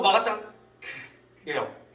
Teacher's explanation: 기역 모양으로 혀뿌리가 이렇게 막았다가 목구멍을 크 하고 터집니다